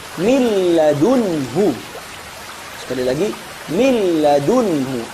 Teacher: Memasukkan nun mati atau tanwin ke dua huruf, yaitu lam sama ro tanpa disertai ghunah. Jadi memasukkannya secara totalitas. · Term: idgham kamil